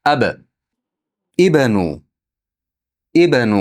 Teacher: Ab bda har doim sukun holatda qalqala qiling.